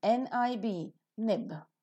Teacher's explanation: the tip of the tongue makes a firm contact with the alveolar ridge to form a complete closure of the oral cavity · soft palate is lowered to open the nasal passage of air the air that is coming out in the lungs escapes through the nose and the vocal cords vibrate while the sound is produced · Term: voiced alveolar nasal